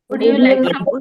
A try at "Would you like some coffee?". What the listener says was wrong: উড হচ্ছে না, উডটাকে উজ বলেন।